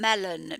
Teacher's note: the 4th sound in melon is obviously a schwa